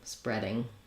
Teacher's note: You'll see the eh red tent vowel, and then our typical ing ending